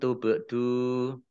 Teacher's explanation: Wa in tubdu, nun sukun bertemu dengan huruf ta, bacaan ikhfa dibaca samar-samar, ba sukun dibaca qalqalah, baca memantul ya